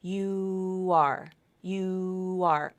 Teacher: there's no stop remember this is linked with continuous vocal cord vibration